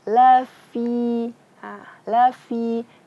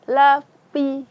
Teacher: fi itu makhrajnya ujung lidah bertemu dengan perut bibir bawah. Jadi bacanya lafi. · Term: fa